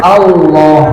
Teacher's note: A-nya tipis Allahnya tebal · Hamzahnya tipis. Jadi A itu tetap dibaca tipis, sementara Allah-nya itu dibaca tebal.